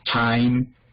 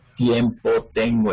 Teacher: en inglés la D y la T son alveolares, en español son dentales. Una diferencia que deben tener en cuenta.